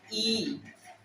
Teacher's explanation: मुंह खुलता है, थोड़ा खुलता है, बहुत हल्का, और उसमें जीभ ऐसे आ जाती है कि तालू से हवा को रगड़ देती है, इसीलिए तालव्य है।